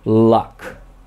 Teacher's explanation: the tongue blocks the middle of your mouth so that the air has to pass on both sides of your tongue, one or both sides of your tongue, and the tongue itself moves a lot to shape the sound, such as luck. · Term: Lateral sounds